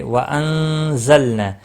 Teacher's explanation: ما الف مدہ ہے، ایک الف کے برابر کھینچ کر پڑھیں گے۔ وانزلنا نون ساکن کے بعد حروف اخفا کا زا آیا ہے، اخفا حقیقی ہوگا، لام ساکن کو ہلانا نہیں۔